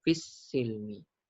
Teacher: Idgham syamsi. Memasukkan sin ke dalam lam. Maka kita tak baca fil tapi terus ke sin